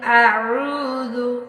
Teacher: قل، قاف کو موٹا، پیچھے بھی کلاس میں بتایا تھا۔ قل اعوذ، یہ واو کو لمبا کرنا ہے، یہ حروف مدہ ہے۔ واو ساکن سے پہلے پیش ہو تو واو مدہ ہوتا ہے، ایک انگلی کے برابر، جتنی دیر میں ہماری انگلی ایک بند ہو کے کھل جائے اتنا لمبا کرنا ہے۔